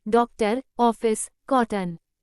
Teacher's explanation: यह अर्ध विवृत दीर्घ पश्च स्वर है